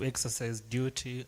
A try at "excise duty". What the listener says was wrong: So it's talked of, allow me just correct that. Sometimes we say exercise, but it's excise. Excise duty and corporate tax.